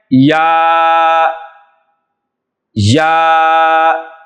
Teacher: اس کا مخرج جو ہے وہ زبان کا درمیانی حصہ اور اوپر کا درمیانی تالو کا درمیانی حصہ، یہاں سے جیم، شین اور یا، یہ تینوں حروف جو ہیں یہ ادا ہوتے ہیں۔